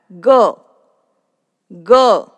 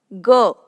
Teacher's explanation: So this is similar to the first consonant. It is non-aspirated consonant. The vocal cords are resonated and the sound comes from deeper in the vocal chamber.